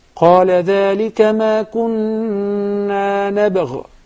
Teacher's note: There is a قلقلة on the ba. I prefer to connect it.